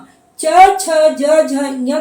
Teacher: हमारी जीभ जो है तालु यानी दांत के ऊपर वाले पोर्शन को हल्का सा स्पर्श करती है या उस तरफ थोड़ा सा लपकती है, तो आप देखेंगे कि तब जाके च का उच्चारण होता है। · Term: तालव्य वर्ण